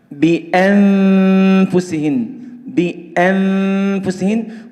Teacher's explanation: وقلنا أن الحرف الفاء ليس له علاقة بالشفة العلوية، ليس له علاقة، إنما هو ارتكاز أطراف الثنايا العلوية على بطن الشفة السفلية